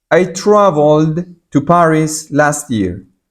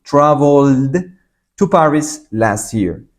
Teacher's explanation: pronuncio con una D porque esto es una consonante que suena